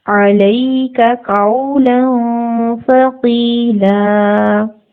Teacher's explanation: آگے والے ورڈ میں لیٹر ہے سا. زبر تنوین کے بعد سا آ جائے تو تنوین کا نون کی آواز کو ناک میں چھپایا جاتا ہے